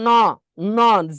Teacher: ন জিভের মাথাটা দাঁতের সাথে লাগে